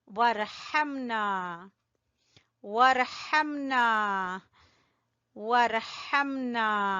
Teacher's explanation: हा को वस्ते हलक से निकालते हुए ना को खींचेंगे